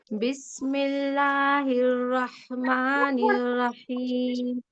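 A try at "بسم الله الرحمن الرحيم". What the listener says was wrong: Sound ناک میں لے جا رہی. ایسا کچھ ہو رہا. آرام سے کھلی آواز میں پڑھیے. بسم اللہ الرحمن الرحیم.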